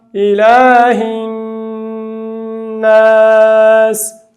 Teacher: دغه نون باید 2 حرکته غنه